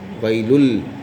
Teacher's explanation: بغیر غنہ کے ملا کر پڑھیں گے. لل پڑھنا، ویلل، نون کی آواز نہیں نکلنا ہے